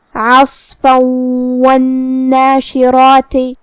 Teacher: اگر ہم یہ آیت کو اگلی آیت کے ساتھ ملا کے پڑھے تو حرف الواو کلمت والناشرات میں حروف الادغام بغنہ میں سے ہے اور ادغام کا معنی ہے حرف کو حرف میں داخل کرنا، لہذا ہم یہ تنوین کو واو میں ملا کے غنہ اور تشدید کے ساتھ یہ حکم کو ادا کریں گے.